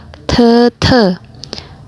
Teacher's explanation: Jadi bukan T biasa, tapi ada nafas yang keluar.